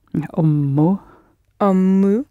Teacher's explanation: Just hang around a bit more on the m because it's a double m